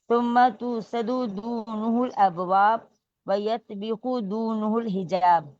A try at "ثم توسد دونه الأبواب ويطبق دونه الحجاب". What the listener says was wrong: دونہ اس کے اعراب ٹھیک کیجئے. دونہ دونوں جگہ دونہ ہوگا. وَيَتَّبَقُ دُونَهُ الْحِجَابِ. چلیے وَيَتَّبَقُ دُونَهُ الْحِجَابِ. باقی سب صحیح پڑھا ہے.